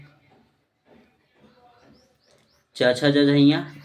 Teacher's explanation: च छ ज ये बोला जाता है तालु से।